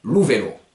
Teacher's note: Exemple, pour un occiton, la bicyclette, lou, vélo, ça s'écrit V-E-L-O, mais ce O a un bel accent. C'est pour vous dire, méfie, l'accent tonique tombe sur le O. Donc ça va pas donner lou vélo, mais lou vélo.